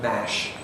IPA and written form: mæʃ (mash)